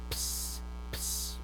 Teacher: You have 2 points of articulation. You have the bilabial, p, right? And then we have the s, alveolar. And you can put those 2 points of articulation together, and you can say at the same time, ps, ps, right? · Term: true sibilant